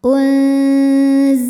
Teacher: karena nun sukun menghadapi huruf Zai maka Nun disamarkan siap-siap menuju makhraj huruf Zai disertai bunyi dengung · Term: ikhfa ausat, ikhfa awsat